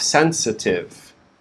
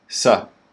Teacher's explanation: The stress is on the first syllable, sen. And then the second syllable, we have the schwa, the upside down E is sa.